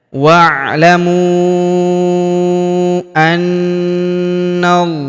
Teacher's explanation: Ini hamzah wasol, hamzah penyambung antara kata sebelumnya dan kata setelahnya. Wa'lamu, huruf mu kita panjangkan 4 atau 5 harokat karena di depan huruf mu terdapat waw sukun yang di atasnya terdapat tanda garis bacaan panjang 4 atau 5 harokat, alifnya tidak dibaca ya.